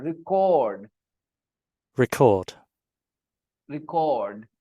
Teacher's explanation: record record the verb record is the verb record record record stress on the second part cord part